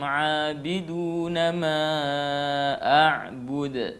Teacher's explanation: dia namanya qalqalah kubra, qalqalah besar. Ya, pantulannya besar. Ya, jadi harus keras.